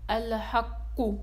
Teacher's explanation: القلقلة الكبرى، إذا جاء حرف القلقلة في آخر الكلمة مشددا فإنه ينطق ساكنا عند الوقوف عليه، وحينئذ يهتز اهتزازا أكبر من اهتزازه في القلقلة الوسطى عند النطق به، ومثاله: الحق.